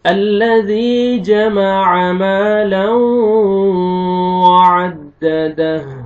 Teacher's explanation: تنوین کے بعد حروف یرملون میں سے واو ہے، آپ نے ادغام کرنا ہے غنہ کے ساتھ، لاؤں، نوز میں ساؤنڈ لے کے جائیں گے، हा को आपने साकिन करना है, दह, वअद्ददह, अल्लज़ी जमअ मालन, नोज में साउंड लेके जाएंगे और वाव को आपने लिप्स डाउन में लेके जाना है ताकि वाव अच्छी तरह अदा हो।